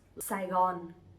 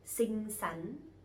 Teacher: we have two the same sounds, sờ nặng và sờ nhẹ, which are S and X, but we will pronounce them similarly. So it's not like because this one is stronger and this one is lighter, so we have to speak differently, but we all pronounce them Saigon.